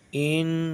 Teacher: نون کی آواز کو ناک میں چھپا کر پڑھنا چاہیے۔ ناک میں چھپا کے یعنی ناک میں رکھنا ہے، جیسے ان ناک میں ان، جیسے ناک میں ہی آپ کو چھپانا ہے چاہیے۔